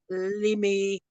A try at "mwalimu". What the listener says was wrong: The last one is not limi. It's not me. It's mu. The last mu is mu.